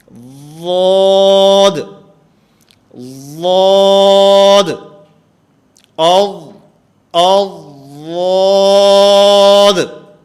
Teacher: زبان کا کنارہ میں سامنے کے دانتوں سے ٹکرا رہا ہوں، ثنایا علیہ کے ساتھ ٹکرا رہا ہوں، تو اس سے ضاد کی آواز صحیح طور پر ادا نہیں ہو رہی